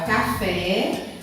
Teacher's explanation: a sílaba tônica foi a última então por isso ela é uma palavra oxítona